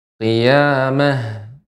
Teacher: Ha ta marbutah. Ketika sukun maka menjadi ha.